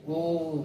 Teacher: ह्रस्व स्वर की अपेक्षा इसमें 3 गुना समय लग रहा है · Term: प्लुत स्वर